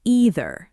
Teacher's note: In American English, most people say either with a long E sound at the start. >> And in British English, it's often pronounced either starting with more of an I sound.